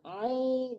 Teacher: Jadi ain itu perlu banget diterapkan membacanya di tengah-tengah tenggorokan. Ain, jangan i.